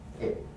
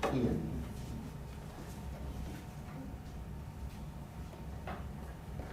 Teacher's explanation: the vowel I is a high front lax vowel.